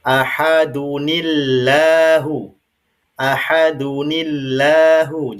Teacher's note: maka lam pada lafaz Allah ini bunyinya la bukan lo ya. Jadi ahadunillahu ahadunillahu jadinya bukan ahadunillahus somad ya tapi ahadunillah. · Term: tipis